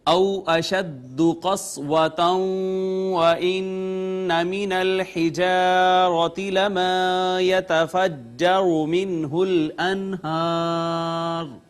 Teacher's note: واو کا ماقبل مفتوح واو لین، اس کے بعد واو کے اوپر شد آئی تھی، ہم نے ما قبل دیکھا تو نون تنوین، لہٰذا ادغام بالغنہ